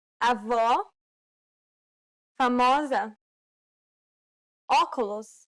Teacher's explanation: This is identical to the O in the word hot. This sound is known as the open O sound in Portuguese.